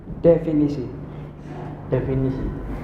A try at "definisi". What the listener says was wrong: S-nya lebih banyak di sini. Definisi. Ya ini yang namanya pengucapan yang akan kita pelajari sama ini gitu. Definisi. S-nya yang kental di sini.